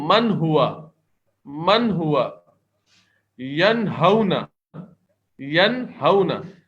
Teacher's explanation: کوئی ہم غنہ نہیں کر رہے، آواز کو ٹھہرا نہیں رہے، روک نہیں رہے